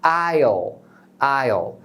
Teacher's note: Porque aí, na verdade, você está pronunciando o pronome I mais o will abreviado, ou seja, só o final do will, que é o som do L, é o dark L.